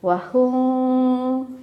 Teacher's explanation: jadi bibir rapatnya tidak sempurna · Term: Ikhfa Syafawi